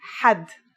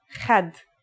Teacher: ha is pronounced in a deeper part of the throat than kha